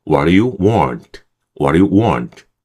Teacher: 처음에 진입 신호 들어가니까 처음에는 좀 힘을 좀 줘야 돼요. 그리고 두하고 U는요 약해지는 거죠. · 왓하고 두유를 한 번에 발음해 줍니다